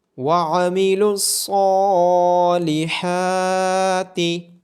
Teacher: وَعَمِلُوا الصَّالِحَاتِ، عین کی آواز گلے کے درمیان سے آئے گی، صاد کو موٹا پڑا جائے گا اور کھڑی زبر ہونے کی وجہ سے صاد کو اور حا کو لمبا کیا جائے گا۔